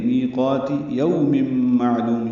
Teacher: میقاتی یوم معلوم، یو بولین ہے، ہونٹوں کو نا تمام گول کریں گے، میم کو میم سے ملا دیں گے۔ یوم ادغام ناقص ہے، غنہ ہوگا۔